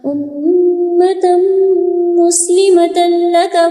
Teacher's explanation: امتم مسلمۃ لک، یہاں پہ غنہ کریں گے، میم میں دیکھیے گا تشدید آ گئی ہے، یہاں پہ غنہ کرنا ہوگا